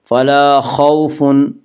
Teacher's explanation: واولین وہ واو جو ساکن، اس سے پہلے زبر و واولین کو نرم آواز کے ساتھ جلدی پڑھیں گی